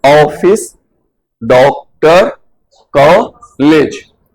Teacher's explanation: ये आ और ओ से मिलकर बना है, अर्थात आ और ओ के मध्य की ध्वनि, बीच की ध्वनि। पूरी नहीं है, आ और ओ पूरा नहीं आ रहा, बीच की ध्वनि आ रही है। · का के साथ आ भी आना चाहिए, ओ भी आना, मिक्स आना चाहिए